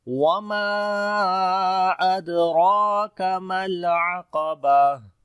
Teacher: الْعَقَبَةُ، وما میم کو لمبا کریں گے، الف مدہ ہے، اور یہاں پر مد منفصل بھی ہے، مد جائز بولتے ہیں، 3 سے 4 سیکنڈ لمبا کرتے ہیں